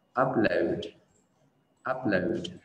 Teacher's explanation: trọng âm rơi vào âm tiết đầu tiên mình sẽ đọc là upload và download